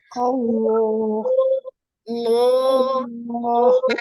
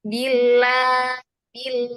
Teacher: ketika lam ditebalkan itu seperti ada Gema di dalam mulut di dalama mulut itu ada Gema yang m langit-langit Allah Allah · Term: lam yang tebal